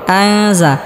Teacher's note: হরফ জ আসার কারণে এখানে ইফা গুন্নাহ করে পড়তে হবে অর্থাৎ নুন সাকিনকে গুন্নাহ সহ গোপন করে পড়তে হবে